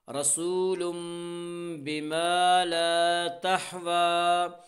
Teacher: تنوین کے بعد با ہے، اسے تنوین کو میم سے بدل کر غنہ اور اخفا کے ساتھ پڑھیں گے اور اسے اقلاب کہتے ہیں رسول با زر بی رسول بی